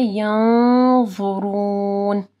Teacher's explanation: نون ساکن کے بعد ضا ہے، اخفا غنہ ہوگا، اور ضا کیونکہ موٹا حرف ہے تو غنہ بھی جو ہے ہم لوگ موٹا کریں گے. اور ینظرون نہیں پڑھنا، ضا کو موٹا پڑھنا ہے.